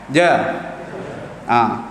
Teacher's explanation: Sekatkan mana lidah kita duduk di atas langit tu, kawasan atas, kemudian kita keluarkan suara dengan deras. Tahan nafas. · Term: huruf jim